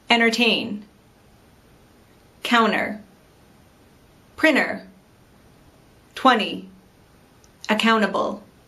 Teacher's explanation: how americans often don't pronounce the letter t after an n in a word